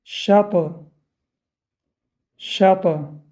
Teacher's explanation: Здесь калкала издает эхо благодаря сукуну.